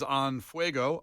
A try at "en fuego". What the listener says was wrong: You said on fuego.